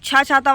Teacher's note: छा छाता जो है महाप्राण में आता है और अघोष में आता है